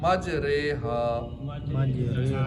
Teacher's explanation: रा खड़ी से री नहीं पढ़ेंगे, रे पढ़ेंगे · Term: इमाला